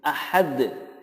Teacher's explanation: Ada tambahan qalqalahnya karena dal disukunkan menjadi qalqalah.